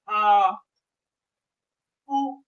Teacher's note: पीछे से आवाज निकल रही ना तो इनको हम क्या कहते हैं हम पश्च स्वर कहते हैं।